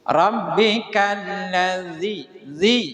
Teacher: Jadi huruf yang keluaran dari tarful lisani wa tarfus sanatainil ulyatain. Ujung lidah dan ujung 2 gigi atas.